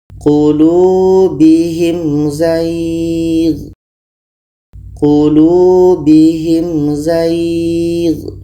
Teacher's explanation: Ada mim mati bertemu za. Ini izhar syafawi, dua-duanya harus dibaca jelas dan tidak dengung.